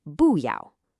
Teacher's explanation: It's normally that sharp, falling fourth tone. But if it comes right before another fourth tone, it changes to a rising second tone